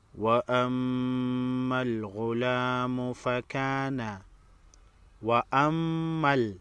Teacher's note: میم مشدد پر غنہ ہوگا